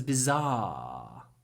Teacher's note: make the ah really long bizar and try to use croaky voice if you can